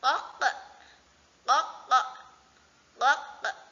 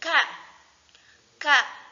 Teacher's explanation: Jadi K itu berada di luarnya ada berada di depannya. Kalau qo itu lebih dalam. Kalau K itu agak keluar lagi.